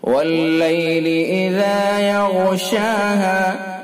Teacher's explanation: غین حروف مستعلیہ میں سے، اس لیے پر یعنی موٹا پڑھا جائے گا